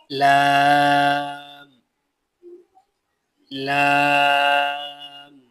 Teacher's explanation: जुबान की करवट के आखिर से नोक तक का हिस्सा जब ऊपर एक दांत और दांतों के मसूड़ों से लगे उससे लाम अदा होता है · زبان کی کروٹ کے آخر سے نوک تک کا حصہ جب اوپر ایک داڑھ اور دانتوں کے مسوڑوں سے لگے اس سے لام ادا ہوتا ہے